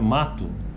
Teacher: nós escrevemos m a t o né ou o mato Mas na nossa pronúncia na maioria do do português brasileiro é na verdade sai um u no final né então é mato esse U é bem fraquinho